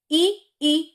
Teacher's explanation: ये आगे से निकलते हैं तालु से, यहां से जो ये ऊपर का ऐसे करके जुड़ा हुआ है ऊपर वाला, तो तालु से निकलते ई और ई की आवाज।